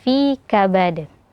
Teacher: Dal yang disukunkan karena waqaf dan hukumnya Qalqalah Kubro ya diqalqalahkan pantulkan suaranya · hukumnya qalqalah kubra ya, dikolkolahkan, pantulkan suaranya, fi kabad. Kemudian ayah sabu, sabu ada huruf ha sukun, maka huruf ha itu sebagaimana sifatnya mengalir nafas dan suara, maka dialirkan terutama ketika sukun ya, ayah sabu.